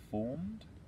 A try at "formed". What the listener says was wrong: Just a little bit, like not rushing it, but just saying that a little bit faster.